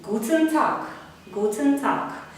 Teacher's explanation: І г на кінці так само оглушається.